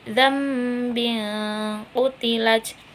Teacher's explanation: karena ada nun mati bertemu dengan ba, dibacanya itu dengan menggantikan nun dengan mim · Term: iklab